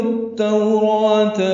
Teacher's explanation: نرمی ہونٹوں کی نا تمام گلائی سے ادا کریں گے اور معروف طریقے سے پڑھیں گے. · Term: واولین